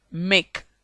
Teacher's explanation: K. Voiceless velar plosive. Make.